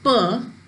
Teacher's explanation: both lips upper lip and lower lip they come together and then they make a complete closure and then air is released suddenly